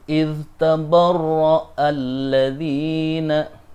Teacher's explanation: Idhnya harus dibaca jelas, tidak boleh ittabarra'a atau diidghamkan, tidak boleh, tetapi harus dibaca idhar atau jelas.